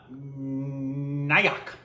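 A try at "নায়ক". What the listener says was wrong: Almost. It's actually Nayok. The O's have it. But yes, Nayok, which...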